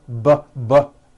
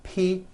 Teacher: p no voicing PP pbbb B voicing ppbb you see that everything here stays the same the only difference is my vocal cords are either vibrating or they're not vibrating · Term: paired consonants